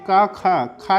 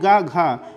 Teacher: आपका ख और घ बोलते समय मुख से अधिक आपकी वायु बाहर आ रही है उस आधार पर माना जाता है महाप्राण और अल्पप्राण व्यंजन अल्प